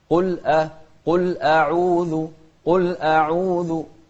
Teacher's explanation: ونرقق الهمزة، لأن الهمزة مش من أحرف التفخيم